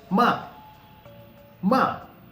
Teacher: I'm sure you must have felt that my voice is falling sharply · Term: fourth tone